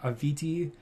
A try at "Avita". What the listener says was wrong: Avita. She pronounced the name as Avita, not Aviti. It's Avita.